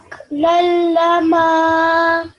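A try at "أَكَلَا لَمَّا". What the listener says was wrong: So that was good, but you need to make the meme a nasal sound as well because it has a shadda. Yeah, a little bit longer. Aklalama.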